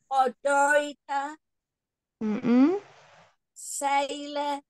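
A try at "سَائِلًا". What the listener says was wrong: Le, enggak le, la, buka. Saila.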